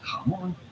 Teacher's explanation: The accent on the O here means that you want to stress on the O, the second syllable, and say jamón, not jamón.